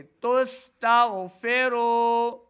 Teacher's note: غائن حروف مستعلیہ سے ہے تو موٹی آواز کے ساتھ اس کو پڑھنا